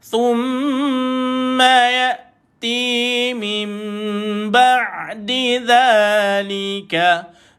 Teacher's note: Mim baris bawah ada nun, atas ada mim, maka berlaku bacaan iklab, iaitu ditukarkan bunyi nun itu kepada huruf mim.